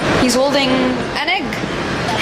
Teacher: But when we pronounce them, there's no gap in between them. It almost sounds like one word. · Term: catenation